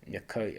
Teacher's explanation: the M is a light or palatalized consonant, that the K is dark or velarized consonant. The opposition between light and dark, or between palatalized and velarized consonant, is quite important in the phonology of Woko. · It's more retracted, more like a schwa sound after the dark K, so it's Mekoi and not Mekei. We can see that stress falls on the last syllable. That's because the word ends in a diphthong. In Woko, if a word ends in a diphthong or a long vowel, then stress falls on that last vowel.